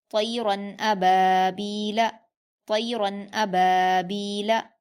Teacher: طیرن ابابیل، حمزہ پر حرکت جلدی پڑھیں گے، با پر الف مدہ ہے 2 حرکات کھینچ کر پڑھیں گے، با پر یا مدہ ہے 2 حرکات کھینچ کر پڑھیں گے، لام پر حرکت جلدی پڑھیں گے، ابابیل۔